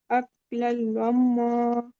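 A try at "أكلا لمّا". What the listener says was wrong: अक्लल्लम्मा, मीम मुशद्दद है ना, गुना कीजिए। इसमें क्या कायदा है? तनवीन के बाद यरमलून का लाम है।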